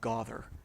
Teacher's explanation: gather is one of those words we would normally expect to become gother in British received pronunciation or like old school New England English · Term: trap bath split